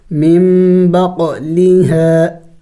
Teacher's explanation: قاف حروف قلقلہ میں سے ہے، ساکن ہے تو قلقلہ کریں گے